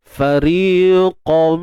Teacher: Masukkan tanwin ke dalam mim bi gunnah dengan dengung yang sempurna, idgham kamil. Ya, idgham bi gunnah kamil.